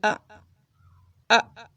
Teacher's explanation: جھٹکے سے شروع کیجئے، زیادہ کھینچیے مت